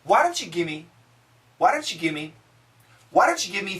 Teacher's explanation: when we have a v sound followed by a consonant usually many times we can cancel the V so actually some people write it g i m m e